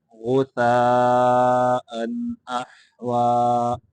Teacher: غثاء غین کو مٹا کر کے پڑھیں گے